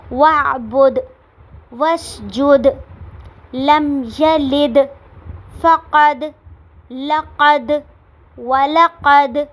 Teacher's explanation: دال پہ ہم نے زیادہ جھٹکا دینا ہے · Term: قلقلہ